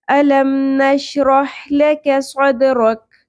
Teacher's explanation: اور یہاں پہ دونوں جگہوں پہ کاف ہے، قاف نہیں ہے، 2 نقطوں والی قاف کو ہم لحاظ سے یعنی نرم تالو سے ادا کرتے ہیں۔ یہاں پر کش والی کاف ہے جس کو ہم نے حلق کے اس حصے سے ادا کرنا ہے جو منہ کی طرف واقع ہے